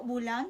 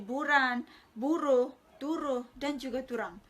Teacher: jika fonem L muncul dalam bahasa Melayu dan juga bahasa Kenyah, maka fonem tersebut dalam bahasa Bidayuh Biatah muncul fonem R